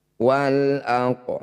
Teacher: Da panjangkan 6 harokat, huruf terakhir sukunkan. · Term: mad alif lis sukun